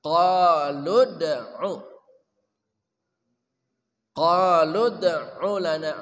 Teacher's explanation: ain dari tengah kerongkongan